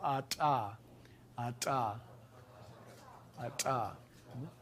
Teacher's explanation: hold your breath, make your ejective t and then release into a vowel